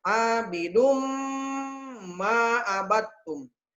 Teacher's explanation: Guna. Dengung 2 harakat.